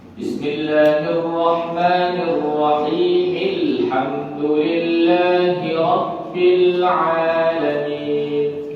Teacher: Hamzah wasal itu hilang di tengah-tengah, nampak di permulaan.